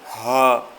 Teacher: ہا گلے کے نیچے سے، یہاں حلق سے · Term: آنکھ والا